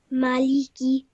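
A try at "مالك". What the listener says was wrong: Excellent. Well done. Really nicely read. And you pronounced all three letters just for 1 second only, which was great.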